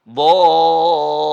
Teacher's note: Waladdallin. Dibaca dho-nya panjang, dho ada alif sebabnya, kemudian ada tasdid pada huruf lam.